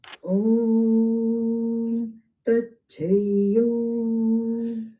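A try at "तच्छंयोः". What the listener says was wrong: Yo only 2, not too long. It is more 3, 4 matra. So Tachaiyo.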